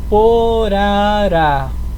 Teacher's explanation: A gente acentua o A final. Terminou em A e é oxítona, tem como sílaba tônica a última sílaba, acentua. Coloca o acento agudo. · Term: oxítonas